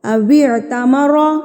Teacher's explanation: را کے اوپر زبر آ جائے گی تو را کو ہم نے پر کر کے پڑھنا ہے، موٹا پڑھیں گے را کو